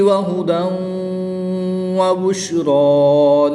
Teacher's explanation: تنوین کے بعد حرف یعملون میں سے واو آ رہا ہے تو یہاں پر ادغام مع الغنہ ہوگا یعنی غنہ کر کے پڑھیں گے۔ را کے اوپر کھڑی زبر ہے اس لیے اس کو پوری یعنی موٹا پڑھیں گے۔